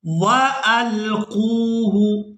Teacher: ہم نے قاف کو واو مدہ کی وجہ سے کھینچ کر ادا کرنا ہے